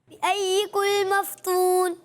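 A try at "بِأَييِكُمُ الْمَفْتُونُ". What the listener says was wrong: ये बिअय्यिकुल मफ्तून नहीं है, बिअय्यिकुमुल मफ्तून, मीम भी है, ठीक है। बिअय्यिकुमुल मफ्तून,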